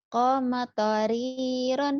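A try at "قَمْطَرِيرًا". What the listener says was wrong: Kome, jangan ada e-nya. Ini jangan. Kom toriron. Kom toriron.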